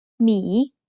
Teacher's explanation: the word me is said with a rising tone but m is a low class